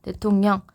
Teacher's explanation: 앞말에 미음, 이응이 왔을 때 뒷말에 리을이 니은으로 바로 바뀌는 현상이라서 요거를 우리가 리을 비음화라고 해요.